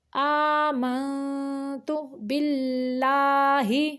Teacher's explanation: اللہ کا لام یہ باریک پڑھیں گے کیونکہ اس کے پچھلے حرف کے نیچے زیر ہے